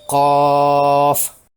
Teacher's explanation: اس طرح اس حرف مدہ کے بعد فا پر جزم کی صورت میں سکون ہے۔ حرف مدہ کے بعد سکون سے مد لازم 6 حرکات کھینچ کر کرنی ہوتی ہے حرف مدہ پر، یوں پڑھا جائے گا، قاف۔